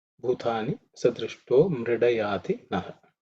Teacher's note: This is with tongue raised up at cerebral sh.